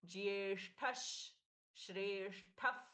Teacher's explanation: विसर्ग का श में परिवर्तन